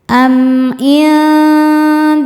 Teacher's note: Am indahum [bernyanyi] in ada hukum ikhfa hakiki aqrab sebab nun sukun bertemu huruf dal. Cara bacanya nun dibunyikan samar-samar menuju dal disertai dengungan. · Berikutnya ada izhar syafawi. Karena mim sukun menghadapi huruf selain mim dan ba yaitu huruf ain. Cara bacanya mim sukun dibaca jelas.